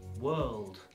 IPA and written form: wɜːld (World)